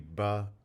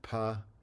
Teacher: the voiced and voiceless contrast in that environment in the initial environment